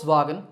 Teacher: the initial V is actually pronounced as an F sound in German so the first part of the name sounds like the English